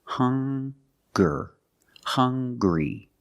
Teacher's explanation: They also make the same sound with the nasal sound and the hard g.